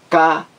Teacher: É uma palavra paroxítona, porque a sílaba mais forte é a penúltima.